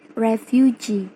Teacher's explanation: primary stress on the suffix and secondary stress on the stem